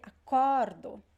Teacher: the stressed syllable is the second to last it's not the last